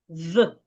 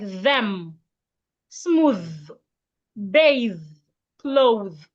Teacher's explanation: Put your tongue in between your teeth and make vibration.